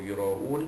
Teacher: Ra'un, ra alif di atas ra itu bertemu dengan hamzah dalam satu kalimah, itu yura'un, hukum dia is mad wajib muttasil, wajib dibaca pada kadar 6 harakat, kerana ianya huruf mad itu bersambung dengan huruf hamzah